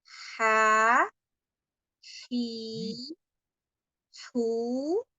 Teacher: ada nafas dulu yang mengalir ya sebelum pengucapan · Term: wasatul halqi